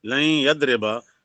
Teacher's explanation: مطابقی مثال، مطابقی مثالیں، نون ساکن کی مثالیں یا کی مثال جیسے لن یضربا جو اصل میں لن یضربا تھا، اب نون ساکن حروف یرملون کے حرف یا سے پہلے ہے تو نون کو یا کر دیا اور یا کو یا میں غنہ کے ساتھ ادغام کر دیا